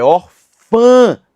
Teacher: O tio só está lá pra dizer que essa vogal possui som nasal e não som oral.